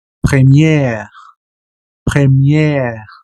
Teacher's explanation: Es gutural la pronunciación. Pero aquí la E como que va a tener un alargamiento de pronunciación